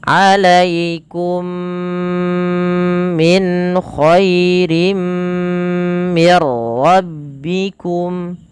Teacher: Kemudian mim mati bertemu mim, idgham mimi. Alaikum sambil ditahan. Jangan alaikum min khair, tapi ditahan dulu.